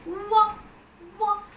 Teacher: there is a considerable rise in the back side of your tongue towards the soft palate. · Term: labio-velar semi-vowel